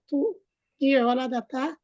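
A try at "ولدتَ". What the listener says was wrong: না না, অলাদাতা হবে না, অলাত্তা অলাত্তুমা অলাত্তুম।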